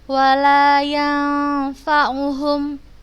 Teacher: Ketemu ini nun sukun, kemudian setelahnya ada huruf fa. Hukumnya ikhfa, bacanya samar.